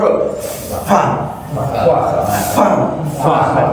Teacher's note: ketika melafazkan huruf fa itu pakai bibir bagian dalam. Hm. Bibir bagian dalam. Tempelkan ke ujung gigi atas. Harus ada udara fa fa fa lain.